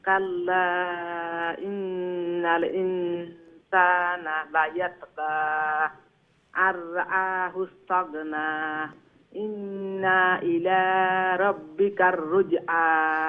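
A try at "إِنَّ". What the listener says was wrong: আচ্ছা, ইন্না যে না আর একটু শর্ট করবা, ইন ওই লোক নুন মুশাদ্দাদুর গুন্না, এরপরে নুন জবর না বাট্টি কুইকলি ইলাজ যাইবে গে, শুনুক আমি কিলান কই, ইন্না ইলা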